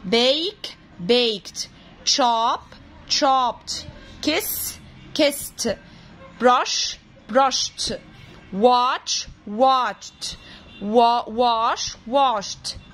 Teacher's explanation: الإيد اللي بنضيفها بنسمعها t لأن الأصوات دي كلها بنقول عليها voiceless